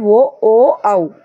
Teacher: కంఠము, అలాగే పెదాలు కూడా సాగదీసి పలుకుతాం కదా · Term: కంఠోష్ట్యాలు